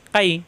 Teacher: ইয়ার মাকরাজ জিব্বার মাঝখানে উপরে চাপ দিয়ে। কাই, ফা যাবর ফা, কাইফা। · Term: লিনের হরফ